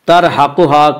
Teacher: ترحقها کی را کو پر پڑھیں گے، اس کا قاعدہ ہے کہ را ساکن سے پہلے زبر پیش آئے تو را ساکن کو پر پڑھیں گے، را ساکن سے پہلے زیر آئے تو را ساکن کو باریک پڑھیں گے، اور یہاں را ساکن سے پہلے تا کے اوپر زبر ہے اس لیے را ساکن کو پر پڑھیں گے۔